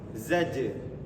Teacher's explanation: Kenapa jimnya mantul? Dia punya sifat yang namanya qalqalah. Qalqalah sugro.